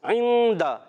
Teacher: عین کی ادائیگی حلق کے درمیان والے حصے سے